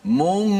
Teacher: kalau nun bertemu dengan kaf, suaranya di hidung tu lebih mendominasi di hidung daripada huruf-huruf yang lain. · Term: Gunnah